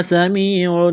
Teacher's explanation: سین میں سیٹی کی آواز پیدا کریں گے، سین کو باریک کرنا ہے